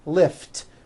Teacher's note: Lift ends with an unvoiced T.